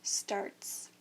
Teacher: the t is an unvoiced sound so the s also stays unvoiced and we say starts